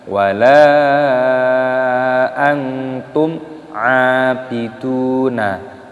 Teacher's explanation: mim sukun bertemu dengan ain, hukumnya dibaca idhar syafawi, dibaca jelas. Jadi jangan didengungkan.